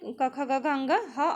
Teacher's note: क ख ग घ अंग ह और विसर्ग का उच्चारण कंठ से होता है, इसलिए उन्हें हम कंठ ध्वनि कहते हैं